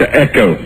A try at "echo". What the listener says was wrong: Echo. No need to put an N on that A.